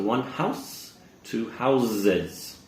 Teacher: Hear that nice S sound, house? However, when we're saying plural, the house, the S sound changes to a Z or a Z sound